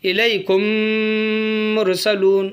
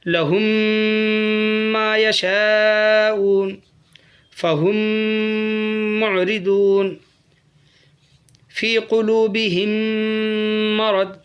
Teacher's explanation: قاعدہ ہے ادغام شفوی کا قاعدہ ہے، جزم والی میم کے بعد تشدید والی میم کو میم سے ملا کر گناہ کے ساتھ پڑھیں